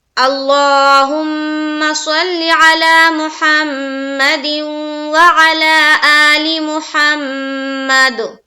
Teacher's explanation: صاد کو منہ بھر کر بولیں گے، صلی میں یائلین کا قاعدہ کر رہے ہیں، جلد ادا کرنا ہے.